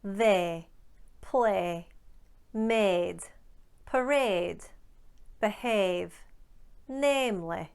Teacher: what the northern english do is they eliminate part two of this diphthong and they elongate part 1. that's what the colon means it's indicative of length so a